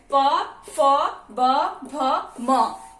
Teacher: इसका उच्चारण स्थान है ओष्ठ।